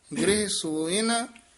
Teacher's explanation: ਸਸੇ ਹੋੜੈ ਨਾ ਥੋੜਾ ਜਿਹਾ ਦੀਰਘ ਉਚਾਰਨ ਕਰਨਾ